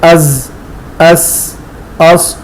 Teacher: ان حروف کی ادائی میں سیٹی کی آواز پیدا ہوتی ہے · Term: صفیر